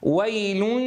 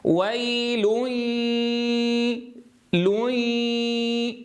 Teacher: لابد أن يخرج الصوت الذي بينهما فيه صوت للياء بنسبة متساوية مع صوت الغنة. ركزوا يا إخوة، نصف الصوت للغنة ونصفه للياء.